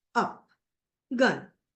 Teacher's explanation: Central unrounded vowel between open and half open